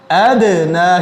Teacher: یہ دال جو ہے یہ ان میں شامل ہے حروف قلقلہ میں، اس لیے اس کو ادنا ہلا کے پڑھا جائے گا. اگر اس کو ادنا ہم نہیں ہلائیں گے تو یہ غلط ہو جائے گا.